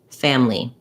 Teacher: hear people saying this with just two syllables family that's because that reduced or a syllable in family is so short that sometimes it's almost dropped